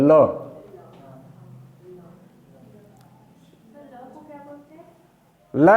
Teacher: ल जो है वह पार्श्व व्यंजन है। ल का जब उच्चारण करते हैं तो ल में होठ जिह्वा जो है वह जाकर तालु से चिपक जाती है, और जो प्राणवायु है अगल बगल से निकल जाती है।